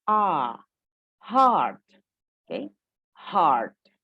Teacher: A itu mulut terbuka bulat, ya, tapi tidak mengeluarkan bunyi O. Jadi beda dengan bunyi O, ya, antara A dan O. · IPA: /ɑ:/